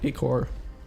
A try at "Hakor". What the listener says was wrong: I normally pronounce the H. Yeah, like hawk.